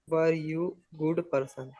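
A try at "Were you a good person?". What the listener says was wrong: वर यू गुड पर्सन? एक question की feeling लाओ, एक लगना चाहिए कि मैं क्वेश्चन पूछ रहा हूँ, ऐसा नहीं वर यू भैया साइंटिस्ट, ऐसा लग रहा है आप उसको बता रहे हो भैया तू ना साइंटिस्ट था। उससे पूछना है, क्वेश्चन करना है।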